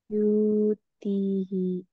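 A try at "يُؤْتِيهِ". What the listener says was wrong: panjang enggak? Kenapa panjang? Ini enggak panjang kakak. Karena wawunya enggak ada sukunnya. Jadi bukan matobi'i. Nah, kalau huruf yang enggak ada harokatnya berarti enggak usah dibaca. Jadi bukan yuti, tapi yuk, yuk.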